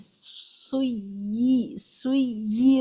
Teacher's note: اس لیے اوپر اس کو 2 یا لکھ کر بتایا گیا کہ یہ 2 یا ہے، اس کو سختی کے ساتھ پڑھیں، اور دونوں یا سنائی دینی چاہیے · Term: تشدید